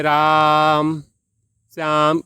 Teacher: आवाज जो है लॉन्ग करके बुलाया जाता है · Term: प्लुत स्वर